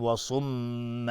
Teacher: و صم مأوا، اینجا اگر توقف کردیم میگیم و صم، میم مشدد دو حرکت غنه میدیم